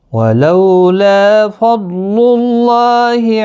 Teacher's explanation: لا ایک الف کی مقدار کے برابر کھینچ کر پڑھیں گے، ضاد مستعلیہ ہے، پر پڑھا جائے گا ، اللہ کلام اس پیش کی وجہ سے پر پڑھا جائے